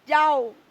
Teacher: আই এবং ও দ্রুত গতিতে একসঙ্গে যুক্ত হয়ে গেছে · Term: গ্লিডিং সাউন্ড